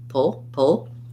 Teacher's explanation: there's a little bit of a schwa because it's a dark l · I'm not going to do much vowel there. I'm going to move as quickly as I can from the P right to the L, pull, pull. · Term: syllabic L